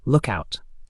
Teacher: Aussies smash it into a single fluid compound word · Put the strong stress on the first syllable look and let the out drop off quickly. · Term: single word rhythm